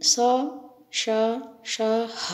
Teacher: दो उच्चारण अंग एक दूसरे के इतने समीप आ जाते हैं कि दोनों के बीच में निकलने वाली हवा रगड़ खाकर बाहर निकलती है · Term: संघर्षी व्यंजन